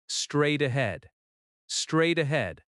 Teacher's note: The stress falls on straight and head.